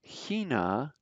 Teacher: that ch is like a guttural in the beginning